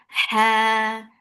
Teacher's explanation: Ha. Give a hams in ha. Make it 2 counts long and it should be from your throat.